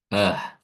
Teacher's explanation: huruf hamzah dilafazkan dengan baik yaitu ee aqsal halqi keluarnya dari tenggorokan bagian bawah